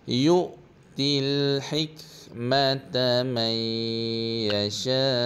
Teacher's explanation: Pada hik tu ada boleh ada sikit angin ya.